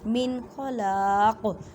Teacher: نون ساکن کے بعد خوا اور خا حروف حلقی میں سے ہے، اظہار کا قاعدہ کریں۔ اظہار کا مطلب ہے ظاہر کرنا، قوف کو ساکن کریں گے تو کلکلہ کریں گے، کلکلہ کا مطلب ہے ہلا کر پڑھنا۔